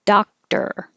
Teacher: Looks like an O, sounds like an ah.